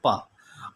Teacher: अघोष अल्प प्राण है वो प